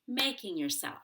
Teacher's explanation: it's not making yourself it's making yourself we stress self